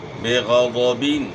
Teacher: غین بھی موٹے حروف میں سے ہے، غوت بھی، تو ان کو آپ نے موٹا ادا کرنا ہے، زبان کو تالو کی طرف اٹھانا ہے موٹا کرنے کے لیے۔